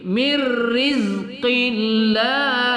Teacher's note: Mirriz ya, zai kita disiskan agak kuat pada sifat as-sufir. Mirrizqillah la lamul jalalah kita baca tarqiq ya, karena diawali huruf berbaris kasrah. Mirrizqillah enggak qillah dah, qillah salah.